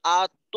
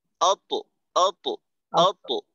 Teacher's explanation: তোর উচ্চারণটা যেন আত্ম এই ধরনের না হয়, আত্ম একেবারে মুখ খোলা রেখে, মুখ গোল করার কোন সুযোগ নেই, অত অত অত একেবারে মুখটা খোলা থাকবে, আওয়াজটা মোটা হবে, কল কলা মোটা